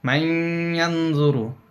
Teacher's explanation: এখানে নুন এবং ইয়া প্রায় কাছাকাছি উচ্চারিত হয়, এটাকেই বলা হয় মুতাকারিবাইন।